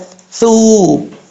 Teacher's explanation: ثا بغیر سیٹی کے پڑھا جاتا ہے، ثو، زبان کا سرا اوپر والے دانتوں کے اندرونی کنارے سے لگے تو ثا پڑھا جاتا ہے، ثا۔